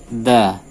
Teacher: Ta dia berdesis, namun untuk dal dia tidak berdesis. Da. Jadi ujung lidahnya ditempelkan di pangkal gigi dari atas, pangkalnya berbatasan dengan gusi.